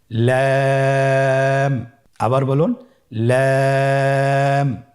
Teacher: লাম হরফটির মাখরাজ হলো জিহ্বার আগার কিনারা উপরের দাঁতের মাড়ির সঙ্গে লাগিয়ে উচ্চারিত হয়।